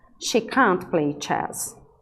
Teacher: Aqui, a afirmativa vai ser decrescente a entonação no final.